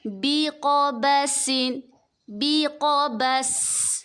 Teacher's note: سین میں سیٹی کی آواز نکالیں گے